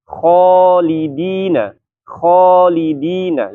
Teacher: jadi alifnya ikut-ikutan tebal ya · Kha salah satunya huruf isti'la, maka dia punya sifat tafkhim. Nah, karena kha di sini sifatnya tafkhim ya, maka alif di sini alif yang mat ya.